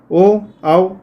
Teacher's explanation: ओ और औ कंठ और ओष्ठ मतलब होठ से भी होता है और कंठ से भी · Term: कंठोष्ठ